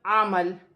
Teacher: عین زبر ع، میم زبر ما، عما، لام دو زیر لن، عمل، وقفاً عمل۔ دو زیر کی تنوین گر جائے گی اور لام ساکن ہو جائے گی